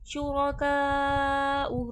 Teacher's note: रॉ पे ज़बर है, मोटा करके पढ़ा जाएगा, का पे मद्दे खींच कर।